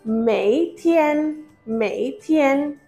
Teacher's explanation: Mei has a third tone.